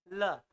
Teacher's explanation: ल, जीभ के बगल से हवा रहा है, चूंकि बगल से हवा निकलता है, बगल मतलब पार्श्व, इसलिए ल जो है पार्श्विक व्यंजन है